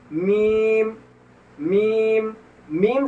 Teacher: शुरू में जो है आपका होठ बंद, फिर बीच में खुला, फिर उसके बाद लास्ट में बंद, मीम एकदम आसानी से अदा होगा।